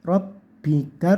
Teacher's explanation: Rabbika, roknya tebal, baknya ditekan karena ada tasdidnya. Rabbika, kafnya dikasih angin sedikit